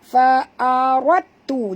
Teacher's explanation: Jangan baca dal. Dal ni tak berbunyi sebab kita sudah idghamkan dia.